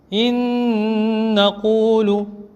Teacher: Après un noun sakin, il y a un autre noun. On va emboîter les deux nouns. On appelle ça le idgham, là aussi en faisant le ghunna.